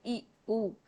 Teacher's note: मुंह बहुत कम खुला, तो इन्हें संवृत स्वर कहते हैं